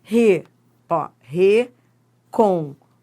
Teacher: esse exemplo é ótimo pra gente ver que é uma sílaba tônica e de timbre fechado. Nem toda sílaba tônica tem timbre aberto.